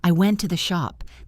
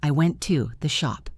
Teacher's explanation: Focus on making the word to very short and weak. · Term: weak forms